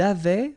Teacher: Il avait, final T not pronounced